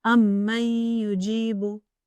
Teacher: It merges partially with the Noon Sākin, and a ghunna or nasal sound is pronounced for 2 counts.